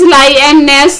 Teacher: The last syllable receives the primary stress.